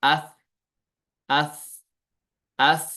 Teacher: فوراً آواز بند نہیں ہوئی بلکہ نرم ہو گئی، سخت نہیں ہوگی آواز بلکہ نرم ہو جاتی ہے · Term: صفت رخاوت